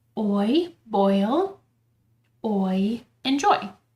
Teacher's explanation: think of them as gliding vowels so in a diff thong the sound kind of begins as one vowel sound and then it moves to another vowel sound